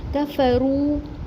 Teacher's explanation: کاف اور فا کے اوپر سنگل حرکات ہیں، کھینچیں گے نہیں، رو واو مدہ ایک الف برابر پڑھیں گے